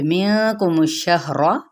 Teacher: نون پہ اخفا ہوگا اور شہر را پر پڑھا جائے گا